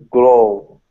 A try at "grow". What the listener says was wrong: Grow. Give me more R. Grow. Yeah, so make sure it's more R in grow.